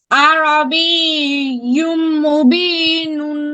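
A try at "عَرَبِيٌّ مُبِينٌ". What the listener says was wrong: হ্যাঁ, ইউম এখানে আরো গুণনা করতে হবে, ধরে রাখতে হবে ন্যানো সেকেন্ডের জন্য। আরবিয়ুম মুবিনুন, পড়ো।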